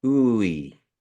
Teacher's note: You're elongating that sound like ooey or oi. It's making it a little longer. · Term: elongate the sound